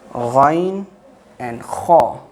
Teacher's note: Ghain and Kha, top part of the throat. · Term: throatal letters